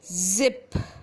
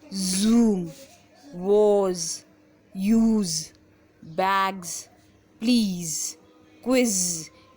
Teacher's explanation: In all these words we can feel that our vocal cord is vibrating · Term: Z voiced sound